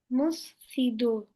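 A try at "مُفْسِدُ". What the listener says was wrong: Musfidu değil. Mufsidu. Önce fe sonra sin. Mufsidu.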